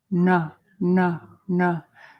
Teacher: the tongue curls back to the roof of the mouth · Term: retroflexive N